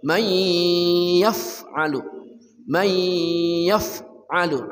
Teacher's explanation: nun mati bertemu ya idgham bi gunnah dengung